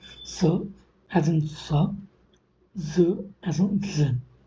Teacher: there is a small gap between the front of the tongue or the blade of the tongue with the alveolar ridge, and the friction the air tried to escape resulted into production of the sound s as in sa, z as in zin.